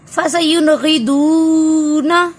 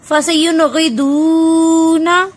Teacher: فسینغدون نون ساکن کے بعد غائن تو اظہار